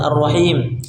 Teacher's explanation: Di mana di kalimat arrahim kan alif lam bertemu huruf-huruf syamsiyah. dimasukkan tidak kita baca al rahim tapi masuk idgamkan dimasukkan kepada berikutnya sehingga masuk secara sempurna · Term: alif lam syamsiyah